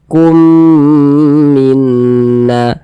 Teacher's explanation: Kita kumnya itu kita tahan, kita panjangkan sejenak, kita dengungkan. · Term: idgham mimi